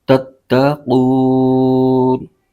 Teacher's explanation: نون پر زبر ہے اور آگے وقف تام یعنی آیت مکمل ہونے کی علامت ہے، تو یہاں پر وقف کریں گے تو اس صورت میں نون کی زبر ختم ہو جائے گی اور نون ساکن ہو جائے گا